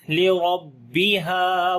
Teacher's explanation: الف مدہ ہے, ہا کو گلے کے درمیان والے حصے سے پڑھیں گے